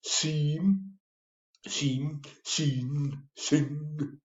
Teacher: Airflow is cut off through mouth and redirected through nose. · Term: Nasal stop